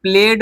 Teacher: गले में कंपन महसूस हो तो हम ड पढ़ेंगे